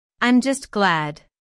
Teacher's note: Notice the stress on glad, just as used for emphasis before an adjective here.